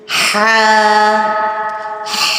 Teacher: ہا وسط حلق، یعنی حلق کے درمیان والے حصے سے ادا ہوگا